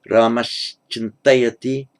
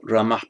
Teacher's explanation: the ah followed by ch is pronounced at the same point of articulation